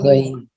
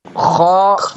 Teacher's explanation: غین اوپر ہے، خا نیچے ہے